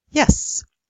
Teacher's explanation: it so happens that yes is said with unvoiced s